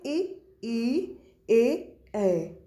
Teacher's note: जब जीभ का आगे वाला भाग, ये जो अग्र भाग टच करता है जिन स्वरों के उच्चारण में, उनको हम क्या बोलते हैं? अग्र स्वर बोलते हैं।